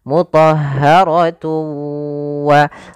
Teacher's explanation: bertemu dengan wau yang mana wau termasuk daripada huruf idgham bighhunah cara membacanya masukkan tanwinnya ke wau · Cara membacanya masukkan tanwinnya ke waw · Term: idgham bi gunnah